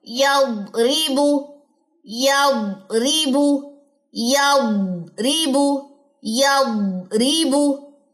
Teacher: ضاد موٹا، استطالت لمبائی دیکھیے اس کی